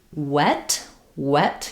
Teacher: So we have lip rounding and we use both lips for this. So if I'm saying a word like wet wet, you can see my lips are rounded.